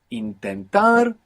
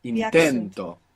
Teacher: Intentar, we have the accent on the end. When we put the o, the accent is just before it.